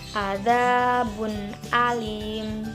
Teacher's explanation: jadi contoh bacaan izhar halqi dalam Alquran yaitu azabun Alim jadi bun dengan Alif dibaca jelas tanpa ada dengungan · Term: idhar halki